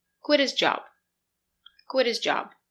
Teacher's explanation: his it's not a stressed word we do not pronounce h link the words quit his job quit his job what is